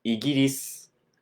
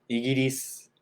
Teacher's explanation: There's a s at the end. We don't really say the u sound so much. Kind of falls off.